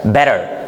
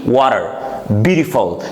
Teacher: when T comes between two vowel sounds, so pronunciation of the letter T changes to not to D, not to T, but it becomes between T and D